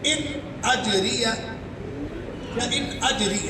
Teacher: ان میں نون ساکن ہے، بعد میں حمزہ آ گیا ہے، اظہار ہوگا، ان نہیں کر سکتے۔